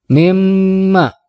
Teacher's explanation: bighunnah hai mimma ini adalah guna bab ada huruf mim ditasydid membacanya harus didengungkan antara dua sampai dengan tiga harokat jadi cara membacanya mimma harus keluar dulu dengung dari rongga hidung · ditasydid membacanya harus didengungkan antara dua sampai dengan tiga harokat jadi cara membacanya mimma harus keluar dulu dengung dari rongga hidung kita